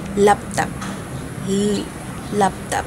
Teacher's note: ang titik titik L panggilagid at ang paraan ng artikulasyon nito ay pagilid na may tunog.